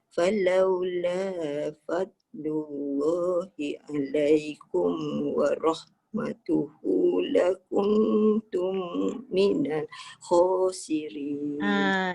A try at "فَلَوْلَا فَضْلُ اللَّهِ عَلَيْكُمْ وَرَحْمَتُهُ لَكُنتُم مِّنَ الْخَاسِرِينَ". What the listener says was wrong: Yang itu dia dah jadi rosak sebab dia tercuri nafas. Kena ulang balik, berhenti kat mana tempat yang kita selesa lah, berhenti. Bukan, maknanya ayat tadi tu dah rosak. Sebab apa? Kita baca sampai lakuntum minal curi nafas. Maknanya ayat tu rosak.